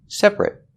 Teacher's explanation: Because when you say separate, the stress is on the first syllable only, and that syllable ate is not stressed